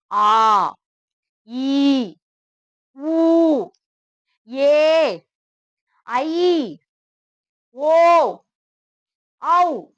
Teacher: நீண்ட ஓசை உடைய எழுத்துக்கள்னால இது பேரு நெடில் எழுத்துகள் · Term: உயிர் நெடில் எழுத்துகள்